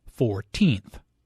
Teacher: The stress is on the second syllable, 14th.